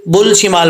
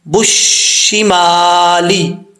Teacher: شین کے اوپر شد ہے اور با کو جب شین سے کنیکٹ کریں گے بیچ میں الف اور لام گر جائے گا. ایسا نہیں ہے کہ بل شمال پڑھیں گے، نہیں، بُشِّمَالی، ٹھیک ہے.